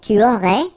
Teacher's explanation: you don't pronounce the final S.